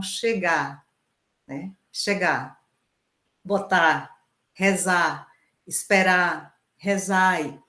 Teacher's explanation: quando a sílaba tônica é aberta no final a tendência a abrir a sílaba anterior · Outro aspecto também que tem a ver com essa harmonização vocálica, mas aí num outro processo, que a gente encontrou também, foram nos verbos. Então, quando a sílaba tônica é aberta no final, a tendência é abrir a sílaba anterior